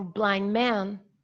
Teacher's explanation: we don't pronounce this final voiced alveolar plosive, yeah, because we have two nasals together.